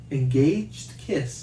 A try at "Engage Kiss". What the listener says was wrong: Engage Kiss. Yeah, there's no D at the end of that.